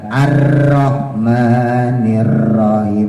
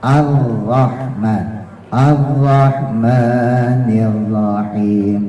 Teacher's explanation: R-nya getarannya jangan lebih dari 2